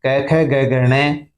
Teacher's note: क वर्ग कंठ से बोला जाता है